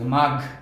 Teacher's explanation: মাঘ বানানটি আমরা দেখছি ময়াকের মা, ঘ, আর উচ্চারণের বানানটি হবে ময়াকের মা, ঘ, আর ব্র্যাকেটে একটি এইচ রাখবো অথবা হ, অর্থাৎ হ বা এইচ এর একটি টান রাখতে হবে, শেষে একটা ধাক্কা রাখতে হবে, মাঘ। অনেকে আমরা মাঘ বলি, মাঘ, গ এর উচ্চারণ করি, কারণ গ এবং ঘ এই দুইটি উচ্চারণ আমরা প্রায়শই শব্দের মধ্যে ভুল করে থাকি, গ বলে ফেলি। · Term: মহাপ্রাণ